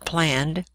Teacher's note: can make three different sounds, d, as in the case of planned, the t sound in asked, and the ed sound in wanted